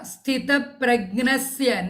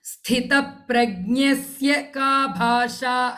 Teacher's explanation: And in the first pada, sthita pragnasya, na sound I hear, there is no na, it is nya